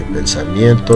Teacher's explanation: pensamiento, sílaba tónica mien